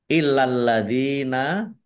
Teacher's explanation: lamnya dibaca double, ada tasdidnya, ditekan biar tampak doublenya.